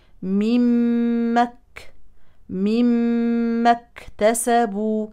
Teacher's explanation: الكاف ساكنا نبين فيها الهمس